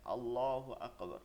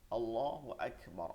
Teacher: আমাদের মনে রাখতে হবে আকবারে যেটা আছে এই শব্দটার মধ্যে কফ না এটার মধ্যে কাফ আল্লাহু আকবার এটা নরম করতে হবে আল্লাহু আকবার আল্লাহ মহান আকবার